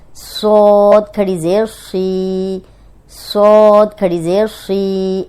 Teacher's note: अब ये सौद मोटा है और ज़ेर के साथ भी मोटा ही होगा, लेकिन दो हरकत इसको लंबा करेंगे।